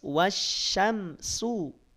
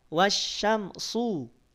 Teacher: kalau Sin kita bunyikan tanpa kita naikkan pangkal lidahnya kalau Shad kita naikkan pangkal lidahnya sehingga beda bunyinya yang satu tipis wasyamsu yang kedua tebal wasyamsu wasyamsu kalau mulut